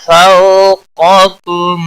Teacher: قاف حروف مستعلیہ میں سے پور پڑا جائے گا